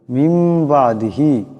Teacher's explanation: নুন সাকিনের পরে বা আসছে, এই নুন সাকিনকে মিম দিয়ে বদলায় পড়তে হবে, এটাকে কলব বলা হয়।